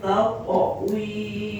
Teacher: qalqalah atau pantulan huruf qof · huruf qaf yang diwaqafkan atau dihentikan, maka pantulannya o, karena menjaga sifat istiqla yang dimiliki huruf qaf